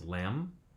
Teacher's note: we lose the final b after m